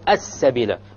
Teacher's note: Solar lamb. It's a solar letter, therefore the lamb will be dropped.